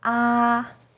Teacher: is high and steady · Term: first tone